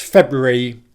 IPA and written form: ˈfeb.ru.ər.i (February)